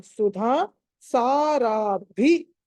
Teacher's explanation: సుధాలో ధా మళ్ళీ మహాప్రాణం. సుధా సారాభి మళ్ళీ మహాప్రాణం.